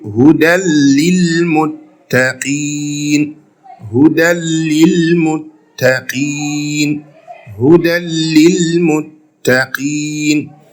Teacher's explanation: The nun sakina will disappear, or the nun sakina or tanween will disappear completely. The nun is no more there. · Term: idgham without gunnah